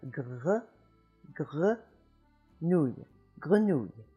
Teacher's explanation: The French R is made in the back of the throat by raising the back of the tongue up higher and higher until it just hits the back of the soft palate in the back of your throat there, and you make a little friction, and you have grenouille, grenouille.